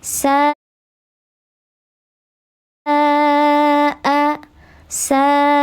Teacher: Ma alif sebelumnya harakatnya fathah dibaca panjang dua harakat. Nama hukumnya mad th'i zahir karena alifnya nampak sahih.